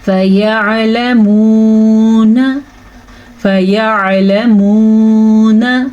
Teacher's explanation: ان سب کے ساتھ ساتھ فا کو لمبا نہیں کرنا، فا پہ زبر ہے، یا پہ زبر ہے، لام پہ زبر ہے، میم کے بعد واو ہے تو ادھر تو ہم کھینچ کے پڑھیں گے، اور نون کو بھی کھینچ کے نہیں پڑھنا، نون کو لمبا نہیں کرنا، نون پہ بھی زبر ہے. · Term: واو مدہ